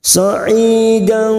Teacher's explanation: Ikfa Hakiki kita samarkan bunyi fathah tanwin dan mendengung selama dua atau tiga harakat · Fatayammamu kita uraikan dari kalimat sa'idan, ai kasrah diikuti sukun 2 harakat matabi'i, dan fathah tanwin bertemu to ikfa hakiki kita samarkan bunyi fathah tanwin dan mendengung selama 2 atau 3 harakat